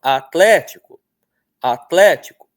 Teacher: A sílaba tônica está bem óbvia. É tlé, não é? Tá até acentuada aí, ó.